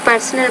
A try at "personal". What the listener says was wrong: you need to pronounce that p with more air personal